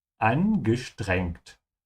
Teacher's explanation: whenever an S comes before a T, it's pronounced like a sh sound. So st, and not s.